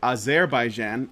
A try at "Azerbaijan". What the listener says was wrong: Azerbaijan. Azerbaijan, yeah. Only stress the Jan. Azerbaijan.